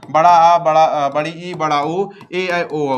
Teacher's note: यही सात स्वर ऐसे हैं जो द्वि मात्रिक होते हैं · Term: द्वि मात्रिक स्वर